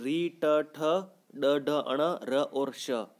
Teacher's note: मूर्धन्य ध्वनियाँ कहते हैं। क्योंकि इनका उच्चारण स्थान जिह्वा मुख में दांतों के ऊपर का जो तालु है और तालु के ऊपर का जो कठोर भाग है वहां से इनका उच्चारण होता है। इसी कारण इनको मूर्धन्य ध्वनियाँ कहते हैं।